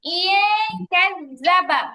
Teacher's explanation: নুন সাকিনের পরে কাফ আসছে ইকফার হরফ গুন্না পাতলা হবে